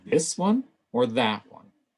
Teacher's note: we've got a higher pitch with this you've got a lower pitch with that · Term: contrastive stress